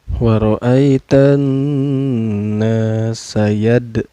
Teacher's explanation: Cara bacanya dipantulkan dan pantulannya kecil aja ya, sugro. Yadkhulu ini dihukumi mad tabi'i karena ada waw sukun sebelumnya berbaris doma. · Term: qalqalah sugro